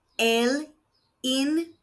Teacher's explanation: The V is making a B sound again, and the second I is making an E sound.